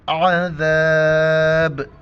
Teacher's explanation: با کے اوپر ہم کلکلا کریں گے، یعنی آخر میں جھٹکا دیں گے